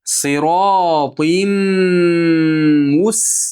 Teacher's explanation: Qiyim deb tanvinni mimni ichiga kirgizing. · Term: G'unnalik idg'om